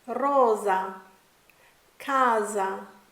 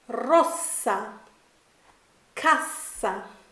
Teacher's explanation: when s is singular it has a Z type sound like Rosa Kaza but when the S is double it has a clean clear sound